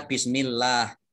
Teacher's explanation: Ya, Ini bismillah. Allahnya ini dibaca tipis karena huruf di depannya kasroh.